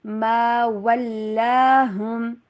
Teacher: ہا کی آواز کلیئر، ہم غنہ نہیں